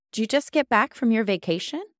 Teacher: the most important words here, get back and vacation. This is where, in English, we give the most importance, the most emphasis.